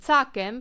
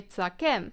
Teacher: you can stress this word on either syllable